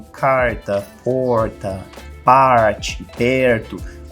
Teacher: no interior de São Paulo, no interior de Minas, no Paraná, onde esse R ele é forte, um R que a gente chama de R caipira